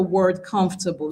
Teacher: the stress for the word comfortable lies on the first syllable